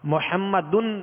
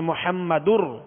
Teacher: اب قاعدہ دیکھیں گے کہ یہ تنوین ہے، تنوین کے بعد حروف یرملون میں سے را ہے، لہذا یہاں ادغام کریں گے، تنوین کو را میں داخل کریں گے. محمد نہیں بلکہ محمدر.